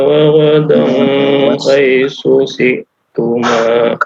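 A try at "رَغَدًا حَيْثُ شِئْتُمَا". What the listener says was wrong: Dari tanwin bertemu dengan huruf ha. Izhar. Ya, izhar halqi. Ya, hati-hati nanti perbaiki lagi untuk fa dan sya ya. Haitsu shi ya, di situ.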